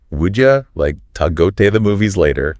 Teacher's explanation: would you becomes would ya, to is like ta